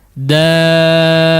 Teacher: ketika bertasydid huruf dal yang kedua, maka dal yang pertama dibaca panjang ya, atau 6 harakat